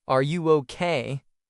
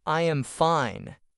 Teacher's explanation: A question may go up at the end like are you okay? A statement goes down like I am fine. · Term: Intonation